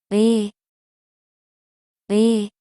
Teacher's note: It is made by combining u and e. So, you should pronounce u and e in a row very quickly.